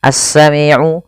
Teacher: As-sami'u, ada bacaan alif lam syamsiyah yang dimana alif dan lamnya tertulis tapi tidak dibaca sehingga diidghamkan kepada huruf shin